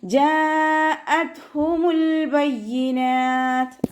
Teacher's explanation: താക്കും കാഫിനും സുക്കൂനാവുന്ന സമയത്ത് കുറച്ച് air pass ചെയ്യണ സൗണ്ട് കൊടുക്കുക കേട്ടോ. ജാഅത്ഹുമുൽ ബയ്യിനാത്ത് അതുപോലെ ഊതുക.